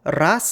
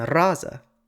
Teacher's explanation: For example, ras in the nominative singular has the letter z pronounced as a voiceless sound, but in the genitive singular it's pronounced voiced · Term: voicing assimilation